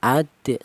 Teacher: Qalqalah itu artinya ada suara pantulan. Jadi cara bacanya huruf dal ini dipantulkan, adik seperti itu ya.